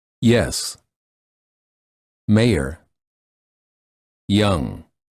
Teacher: the tip of the tongue touches the lower front teeth the front of the tongue is raised near the hard pallet